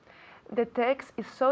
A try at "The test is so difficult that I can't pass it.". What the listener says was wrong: No text, pero test. Right?